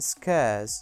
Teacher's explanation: This diphthong begins with a vowel sound that is more open than the /e/ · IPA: /skeəs/